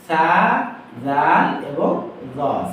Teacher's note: তো এখানে ৩টা অক্ষর কিন্তু একই জায়গা থেকে উচ্চারণ হচ্ছে। এই ৩টা অক্ষর উচ্চারিত হবে জিহ্বার আগা এবং দাঁতের আগা থেকে। সা, জাল এবং জ।